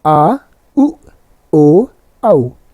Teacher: जिन स्वरों के उच्चारण में जिह्वा का पश्च भाग ऊपर उठता है, पश्च कहलाते हैं। जैसे आ, उ, ओ, औ। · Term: पश्च स्वर